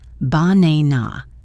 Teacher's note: in the word banana, the stress falls on the second syllable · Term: word stress